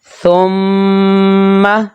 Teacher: غنہ کی صورت میں لمبائی ایک الف کے برابر، لیکن جب زبر پڑھیں گے تو اس کو جلدی ادا کریں گے، اور ادھر جب میم مشدد پڑھیں گے تو غنہ کریں گے، لمبائی ایک الف کے برابر